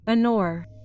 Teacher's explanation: This noun begins with the consonant H, but we know that the H is silent, so it is not pronounced.